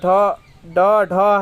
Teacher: ढ ड ढ है जो कि इसका उच्चारण मुर्धन्य से होता है